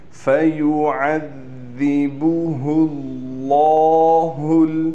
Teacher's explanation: با کو بھی نہیں کھینچیں گے اور ہا کو بھی بالکل نہیں کھینچیں گے۔ بعض بچے ہا کو کھینچ دیتے ہیں، ہا پر پیش ہے۔